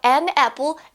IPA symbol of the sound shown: æ